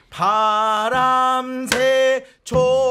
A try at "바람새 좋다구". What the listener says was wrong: 쭉 그음을 유지한 다음에 나중에 시김새 하기 전에 떨어주시는 거 처음부터 흔드시잖아요. 구 밴딩 하나 아. 쭉 밀어서 끝내 구 예. 흔드는 음이 없이 소리를 쭉쭉 밀어서 충분하게 그 시가를 채워주셔야 돼요.